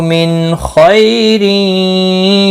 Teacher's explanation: नून साकिन के बाद हुर्फ़ हल्की में से ख आया है, इजहार हल्की होगा। नून को ज़ाहिर करके पढ़ेंगे। खई यालीन है, थोड़ा नरमी के साथ अदा करेंगे।